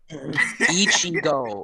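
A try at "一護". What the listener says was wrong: It's not Ishigo. It's Ichigo. You always said Ishigo.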